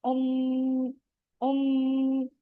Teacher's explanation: मीम मुशद्दद जब भी आएगा वहां पे हम आवाज को टू काउंट्स इतना स्टे कराएंगे और गुन्ना करेंगे, यानी यहाँ पे मीम की आवाज पे हमने थोड़ी देर रुकना है।